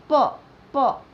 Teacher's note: ओठ, दोनों ओठ मिलते हैं